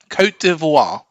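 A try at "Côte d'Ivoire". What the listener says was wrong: you don't pronounce the T otherwise that's perfect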